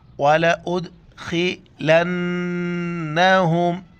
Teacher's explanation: دال پر قلقلہ کریں گے، یعنی جھٹکے کے ساتھ پڑھیں گے. وَلَا امزہ دال پیش اد، وَلَأُدْخِلَنَّهُمْ، نون پر ناک میں آواز چھپائیں گے، لام نون زبر لن، نون زبر نہ، ہم پیش ہم.